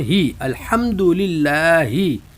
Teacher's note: ہا کو حلق کے آخر سے سینے کی طرف سے، اور باریک ہے اس کی آواز